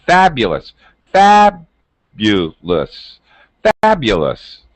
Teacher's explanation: My pitch or tone, fabulous, goes high and low. All right, that's called word stress.